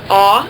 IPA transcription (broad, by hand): ɔ